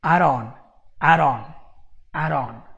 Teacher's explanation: you have a flap T instead of the D all right instead of the D sound you're having an r · Here you have a flap T instead of the D